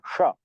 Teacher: ऊष्म ऊष्म यानी गर्म हवा निकलती है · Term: ऊष्म व्यंजन